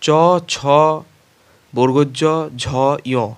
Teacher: এগুলো উচ্চারণের সময় জিহ্বার অগ্রভাগ চ্যাপ্টাভাবে তালুর সম্মুখভাগের সাথে ঘর্ষণ করে উচ্চারিত হয় বলে এগুলোকে তালব্য স্পর্শধ্বনি বলা হয়।